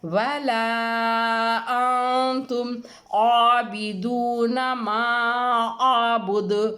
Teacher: عین کے اوپر کھڑا زبر ہے، ایک الف لمبا ہوگا، با کے نیچے زیر ہے یہ نہیں کھنچے گا.